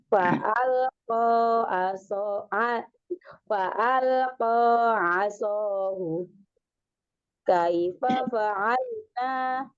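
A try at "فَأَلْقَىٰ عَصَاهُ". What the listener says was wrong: Juga kuatin lagi ainnya. Coba saya kuatin ainnya lagi. Masih agak berat di ainnya, sering diulang, dikuatin lagi, dikuatin lagi.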